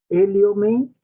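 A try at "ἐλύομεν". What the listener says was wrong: Liomen, mire el acento, está en la siguiente sílaba. Liomen.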